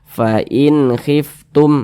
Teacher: Jadi nun sukun berjumpa dengan huruf Kha hukumnya izhar halqi dibaca jelas tidak berdengung Jadi huruf nunnya itu dibaca jelas Fain begitu kemudian tidak didengungkan